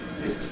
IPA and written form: bɪt (bit)